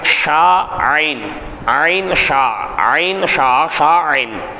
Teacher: தொண்டையின் நடுப்பாகத்திலிருந்து உச்சரிப்பது. தொண்டையினுடைய நடுப்பாகத்தில் காற்றை வெளிப்படுத்தினா ஷா, தொண்டையினுடைய நடுப்பாகத்தை கொஞ்சம் அழுத்தினா ஐன்.